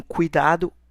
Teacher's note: Em cuidado, o U vai ser a nossa vogal e o I vai ser a nossa semivogal.